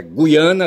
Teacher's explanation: esse U deve ser lido constituindo um ditongo